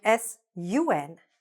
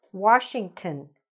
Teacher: sometimes when on appears at the end of a word, it's pronounced un